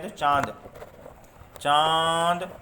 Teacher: हमारी नाक और मुंह दोनों का यूज हो रहा है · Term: अनुनासिक